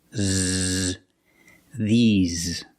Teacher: the s makes a z sound like zebra. Z. You have a voice. You have vibration.